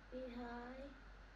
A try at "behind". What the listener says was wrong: Behind. It's got a d sound at the end of it.